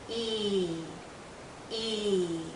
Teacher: Our tongue is generally high, our mouth is closed. Again, our lips are pulled.